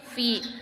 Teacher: Hukum tajwidnya itu adalah mad tabi'i pada huruf fi, yang mana cara baca huruf fi dipanjangkan dua harokat